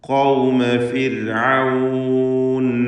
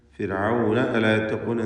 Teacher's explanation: ഖൗമ ഫിർഔൻ അലാ യത്തഖൂൻ ഫിർഔന അലാ യത്തഖൂൻ എന്ന് ചേർത്തോതുമ്പോൾ ദീർഘമുണ്ടാവുകയില്ല. വഖഫിന് വേണ്ടിയാണ് ഫിർഔൻ എന്ന വാവിനെ ദീർഘിപ്പിക്കുന്നത്. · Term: മദ്ദാരിദ് സുക്കൂൻ